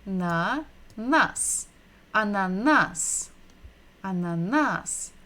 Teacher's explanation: So we're stressing the final syllable